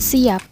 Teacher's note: Sedangkan pada kata siap, P tidak diucapkan secara lepas, karena pada pengucapan kata siap bibir kita tertutup. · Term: P tidak lepas